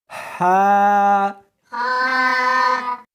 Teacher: اس کو حلق میں سے نکالنا ہے اور ساتھ میں ہوا بھی ہونی چاہیے، ہا۔ ہا نہیں پڑھنی بلکہ اس کو حلق میں سے نکالنا ہے، سینے میں سے نہیں نکالنا، ہا۔